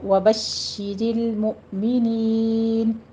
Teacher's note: शीन के ऊपर तशदीद है, सख्ती कीजिए, और कसरा है उसकी आवाज़ बारीक रखें